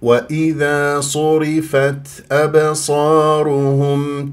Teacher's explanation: التاء فيها في الاخير مهموسه في الوقف والوصل الهمس لطيف ما تبالغ ولا تقلقل